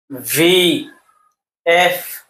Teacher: নিচের ঠোঁট আর উপরের দাঁতের পেটের সাথে, অর্থাৎ আমরা যেইভাবে ফা উচ্চারণ করি সেইভাবে উচ্চারণ হবে।